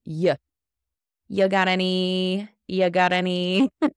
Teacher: So we've dropped the have, and we've dropped a little bit of the you.